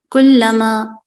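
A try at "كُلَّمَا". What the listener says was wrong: कुल्लमा, good.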